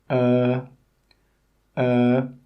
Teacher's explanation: when you make this sound your mouth should be a little bit open like this uh uh and your tongue should be in the middle of your mouth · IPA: ɜ